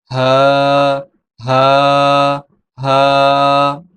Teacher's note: হা হরফটি কণ্ঠনালীর শুরু হইতে উচ্চারিত হয়।